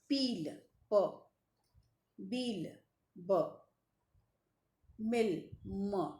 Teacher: The first sounds in the English words peel, p, beel, b, mill, m are produced with the lips tightly shut.